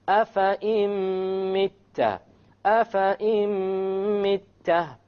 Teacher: So we drop the noon and we put the hamza along with the meme, and that is our idgham with ghunna.